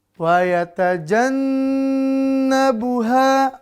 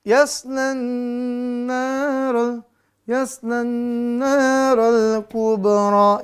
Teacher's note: didengungkan di makhraj huruf nun durasi 2 sampai 3 harakat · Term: Nun bertasdid